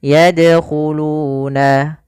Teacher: Bagaimana cara yang benar dalam membaca qalqalah? Yaitu yadkhuluna, seperti biasa saja tapi tetap dia memantul